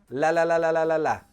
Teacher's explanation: rat run for the L sound it's almost the exact opposite the lips do nothing and the tongue makes all of the sound